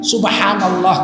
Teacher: Kalau subhanallah itu pasti bibir bergerak karena ada huruf ba. Ba itu kan huruf bilabial. Kalau nggak hidup bibirnya nggak bunyi bahnya itu, betul.